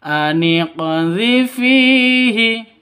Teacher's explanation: qalqalah sughra, lebih rendah pantulannya